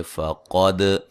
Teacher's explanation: قاف کو موٹا ادا کریں گے، دال پہ قلقلہ کریں گے